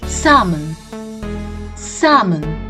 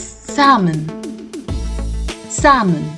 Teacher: the L to this word is silent either in the British English or the American English and it goes like salmon salmon not salmon which we commonly